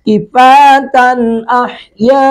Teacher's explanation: تن تنوین کے بعد حمزہ ہے تو یہاں پہ اظہار کریں گے، کفاتن احیاء، یہاں پر مد متصل 3 الف کھینچیں گے منیمم، زیادہ سے زیادہ 5 الف کھینچیں گے، احیاء۔